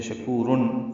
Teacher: جلدی ادا کریں گے، کاف باریک ہے، کو واو مدہ ہے، تنوین کے بعد ہا آنے کی وجہ سے شکورن اظہار ہے